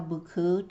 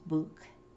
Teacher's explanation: Notice how buku, tail, gets cut off at the end, becomes buk.